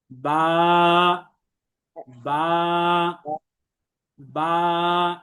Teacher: শুধুমাত্র আমরা দুইটা ঠোঁটকে মিলাবো আর বা হরফ উচ্চারিত হয়ে যাবে · এবং দুই ঠোঁটের ভেজা অংশ থেকে, এই যে আমরা উপরের চিত্রের মধ্যে মার্ক করা আমরা দেখতে পাচ্ছি, অর্থাৎ ঠোঁটের যে অংশটা ভিতরের দিকে থাকে এবং যে অংশটা সাধারণত সবসময় ভেজা থাকে, এই অংশ থেকেই বা হরফটি উচ্চারিত হয়, কোনো কষ্ট কসরত করা ছাড়া।